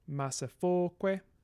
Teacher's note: Because we now have long vowels in the mix, the stress is going to be attracted to them. So we have penultimate stress in this case, rather than anti-penultimate stress.